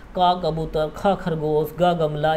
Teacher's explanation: जो का वर्ग है वो कंठ से बोला जाता है।